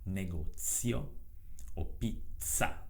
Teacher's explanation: Si pronuncia invece in maniera sorda, quindi Z, quando si trova all'interno di una parola.